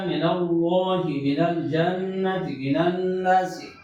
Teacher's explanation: اصل میں یہ دو کلمے ہیں من اللہ، اللہ کا حمزہ وصلی گرا دو تو من کا نون اور اللہ کا مشدد لام کا پہلا لام، یہ دو ساکن ہوئی ہے، پہلے کو فتح دے دو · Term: فتح کا قاعدہ